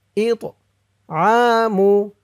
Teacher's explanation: ইতআমু ইত হামজা দিয়ে এই তোয়াকে ধরবে তোটা কলকলার হরফ ধাক্কা দিয়ে পড়তে হবে